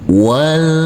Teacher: Yang pertama di huruf lam dulu. Kita baca huruf lam dengan kita tahan dengan 2 harokat dan kita tekan saja.